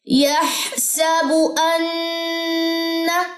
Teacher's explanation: نون مشدد کا یہاں پہ غنہ اور نون کی زبر لمبی نہ ہونے پائے